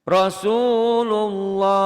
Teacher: maka lafaz Allahnya dibaca tebal berbunyi o seperti o ya